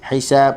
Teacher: Hisab huruf ha halkum tengah.